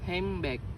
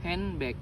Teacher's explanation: For example, in the word handbag, there is an N sound before B. However, when spoken quickly, sound N often changes to M because both sounds are produced with the lips, bilabial sounds. Therefore, handbag is commonly pronounced as hambag instead of handbag. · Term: assimilation